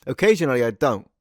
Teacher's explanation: Oh my gosh, it is a bit of a glottal stop, isn't it?